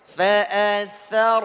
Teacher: Jangan sampai huruf tha ikut tebal.